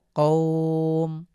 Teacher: ওয়াকফ করলে আমরা মিমের উপরে সুকুন দিয়ে কৌটাকে এক আলিফ টেনে পড়ব